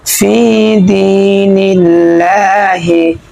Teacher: আল্লাহ শব্দ এই তাসদীদটা আমরা চিকন করিয়া পাতলা করিয়া পড়ব, কারণ হচ্ছে আল্লাহ শব্দ তাসদীদের ডাইনে আমরা জের পেয়েছি, সেজন্য আমরা এখানে পাতলা করিয়ে পড়ব।